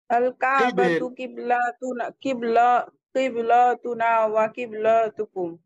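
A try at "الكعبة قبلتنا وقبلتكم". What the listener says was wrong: লা টান দিচ্ছেন কেন? ফাতহা এখানে টান হবে না। আল কাবাতু কিবলাতুনা, তাই না? ওয়া কিবলাতুকুম।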